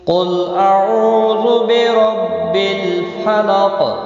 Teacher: واو مدہ ہے، 1 الف کے برابر کھینچ کر پڑھیں گے